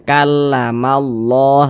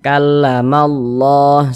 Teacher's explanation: lafaz Allah ini ya di sininya nih ada tanda baca fathah maka lafaz Allahnya dibaca tebal